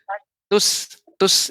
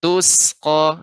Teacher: Aliran udaranya banyak mengalir. Maka huruf sin ini sifatnya rakhawah, banyak aliran udara.